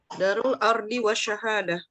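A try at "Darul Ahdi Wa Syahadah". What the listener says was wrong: Darul Ahdi bukan Ardi. Ahdi.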